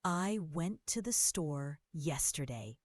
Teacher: The stressed words are went, store, and yesterday because they carry the main meaning. The little words like I, to, and the are reduced, said more quickly and quietly. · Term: sentence stress